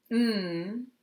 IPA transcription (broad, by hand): n